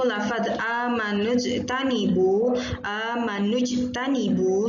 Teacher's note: dibaca memantul karena dia termasuk Qalqalah dan di ini itu termasuk dalam bagian Qolqolah Sugro Qolqolah Sugro